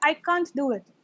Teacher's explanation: The T and the D sound, they merge together, right? Merge together, and you're still wondering whether it is can or can't.